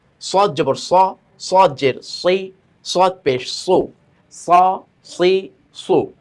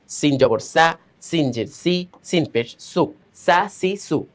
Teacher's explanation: মোটা করে উচ্চারণটা হবে যাতে করে আমাদের উচ্চারণটা সিনের সাথে মিলে না যায়